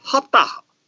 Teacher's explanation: in Jumli, sa is voiceless, pronounced voiceless ha. So, saptaha is pronounced haptaha.